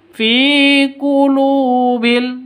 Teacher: kulu panjang dua ketukan karena ada wau mati wau sukun diawali dengan dommah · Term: mad asli